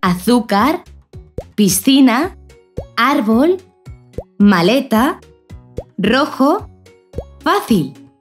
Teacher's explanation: Por lo tanto, son esas palabras en las que el acento o la fuerza que se le da a la voz recae en la penúltima sílaba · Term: palabras llanas